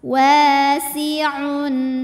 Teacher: tanwin Kalau ketemu sama huruf tenggorokan maka bunyinya tetap n jelas wasiun maju bibirnya bunyi n sudah kembali ke posisi biasa wasiun